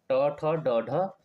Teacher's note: तो ट वर्ग आता हमारा मुर्धा से · तो ट वर्ग आता है हमारा मूर्धा से। किससे आता है, मूर्धा से, यानी मूर्धा से बोले जाने वाले।